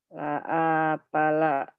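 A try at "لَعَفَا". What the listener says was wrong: Pendek semua. La afala.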